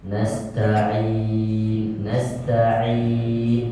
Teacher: Jadi baca huruf ain harus dari kerongkongan. Nasta'in, nasta'in, tidak ada hubungannya dengan hidung.